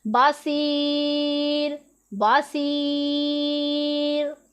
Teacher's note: تو یہ ہمارا کون سا حرف ہو گیا، را موقوف ہو گیا، کہ را موقوف کا مطلب ہے کہ را ہے، اس کے آگے وقف ہے، تو یہ ہمارا ہو گیا را موقوف۔ اسے ہم نے کس طرح پڑھنا ہے، باریک پڑھنا ہے۔